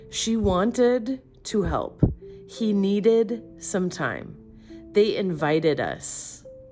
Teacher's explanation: If the verb ends in T or D, you add an extra syllable, ID.